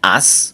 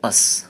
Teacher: একটা হচ্ছে আস অর্থাৎ মুখ সম্পূর্ণ ওপেন করে শর্ট সাউন্ড আস। আর আরেকটি হচ্ছে স সাউন্ড, যেটা মুখ একেবারে সামান্য ওপেন করে শর্ট করে বলতে হবে আস।